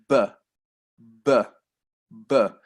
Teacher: when we're making the B sound, our lips come right together.